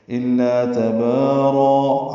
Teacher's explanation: تبارا میں با الف مدہ ہے دو حرکات لمبا کرنا ہے